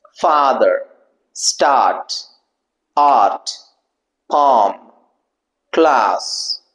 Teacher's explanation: if you observe your mouth, and you will understand it is not rounded. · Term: open back vowel